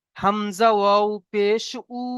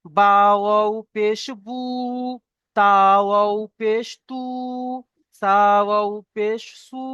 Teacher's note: ওয়াও মাদ্দাকে একালিফ পরিমাণ টান দিয়ে পড়তে হবে